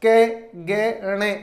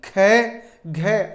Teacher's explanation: प्रत्येक वर्ग का हमने पहला, तीसरा, पांचवा वर्ण लिया, तो प्रत्येक वर्ग का दूसरा और चौथा वर्ण, अर्थात ये दूसरा और चौथा वर्ण महाप्राण वर्ण कहलाते हैं। क्योंकि कै, गे, णे आदि को बोलते समय कम श्वास का प्रयोग करना पड़ रहा है, जबकि ख, घ आदि के उच्चारण में अधिक श्वास का प्रयोग होता है